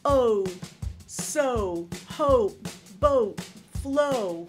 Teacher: the two vowels we're combining are both what we call back vowels, which means that your tongue is in the back of your mouth